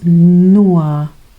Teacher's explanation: en este caso en alemán pues no es la o, sino es la u de urra